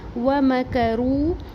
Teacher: آیت نمبر 54، وَمَكَرُوا، واو میم اور کاف کے اوپر سنگل حرکات ہیں، کسی کو بھی لمبا نہیں کریں گے، کھینچیں گے نہیں، حرکات کو چھوٹا پڑھیں گے۔ رو واو مدہ ایک الف برابر پڑھیں گے۔